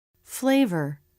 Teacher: The bottom lip goes to the top front teeth for the F and again for the V. · The top lip lifts so the bottom lip has room to vibrate against the bottom of the top front teeth. Very. Bottom lip goes to the bottom of the top front teeth. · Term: F and V Consonants, F and V consonants